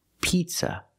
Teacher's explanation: We cannot use the short I sound like this is. We have to use a long E sound like green beans.